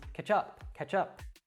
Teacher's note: that ch at the end again we'll connect to the particle up so it becomes catch up catch up now this probably seems